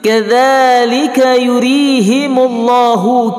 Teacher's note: Kadzalika yurihimullahu kadzadza mat asli panjangnya 2 harakah dan bacaan makhrajul ladza lembut keluar ujung lidah sedikit.